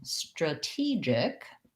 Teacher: because i have second syllable stress this t no longer is a flap it actually says the aspirated t sound